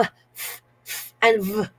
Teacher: the initial consonants in the English words fan and Van are produced by placing the upper teeth very lightly on the lower lip